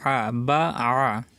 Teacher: আইন সবসময় গলার ভিতরে যাবে, কণ্ঠনালীর মাঝখান থেকে উচ্চারিত হয় আইন। হা আইন, এই দুইটি হরফ উচ্চারিত হয় কণ্ঠনালীর মাঝখান থেকে।